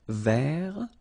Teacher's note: So masculine form, don't pronounce the final T.